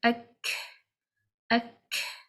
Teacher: even though the tongue is raised from the back for the letter kaf, there is no narrowing of the throat and there is no concaving of the tongue · Therefore, the letter is a light letter. When the letter kaf is read with the sukoon, it has the quality of hams, means we read it like ak, ak.